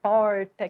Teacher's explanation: uso do r no interior de são paulo esse é bem puxado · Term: r retroflexo, R retroflexo